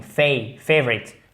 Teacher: Déjà, vous mettez l'accent tonique en premier, ça règle pas mal de choses. La première syllabe, la première voyelle se prononce comme une diphtongue.